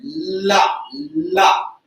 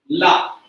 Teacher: ला का उच्चारण दांत से न होकर वर्त से होता है, ला, ला। घर पे बोल के देखना, ला।